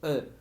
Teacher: En muchísimas palabras lo escuchamos diferente, pero siempre es el mismo sonido, e. Es el sonido más flojo, como si combináramos todas las vocales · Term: schwa